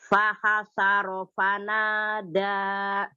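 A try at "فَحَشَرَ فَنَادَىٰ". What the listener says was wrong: Nah, fahasharo fanada. Shinnya kasih tafasyinya lagi. Fahasharo fanada.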